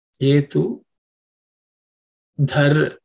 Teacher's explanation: This dha is the fourth letter in the tha varga, so it has to be aspirated.